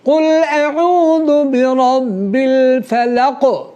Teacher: دیکھیں قاف میں جنبش آئی، اس کو قلقلہ کہتے ہیں۔